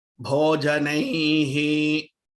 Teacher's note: Nai is dhirgam, so hai will also be longer. It can't be bhojanaihi.